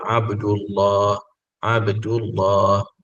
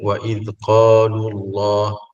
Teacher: jadi lam pada lafzul jalalah itu ditebalkan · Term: tafkhim